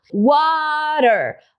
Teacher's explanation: Olha como esse T está entre as duas vogais, A e a sílaba forte é wa. E não r. Então, por isso que eu posso fazer o TEP aí.